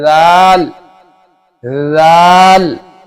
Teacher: जबान की नोक और सामने के ऊपर वाले दो दांतों के किनारे से अदा होता है